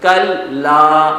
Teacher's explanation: کلا سختی کے ساتھ کیونکہ تشدید ہے